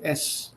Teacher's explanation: for the consonant s i need not use my vocal chords